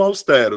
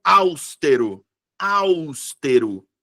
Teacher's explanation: sílaba tônica é a penúltima sílaba, então é paroxítona. Tem três sílabas, tem.